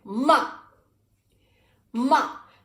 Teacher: the fourth tone is short and to the point